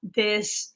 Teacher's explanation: i use a d sound instead of a th sound